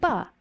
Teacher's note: just taking the va sound and saying it through smacked lips